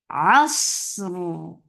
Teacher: Sad will get sifa of rakhawa and it is heavy. It has safir sound. Safir means whistle sound.